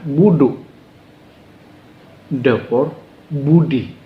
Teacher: ujung lidah kita menyentuh langit-langit tapi tanpa ada diiringi suara H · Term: D titik bawah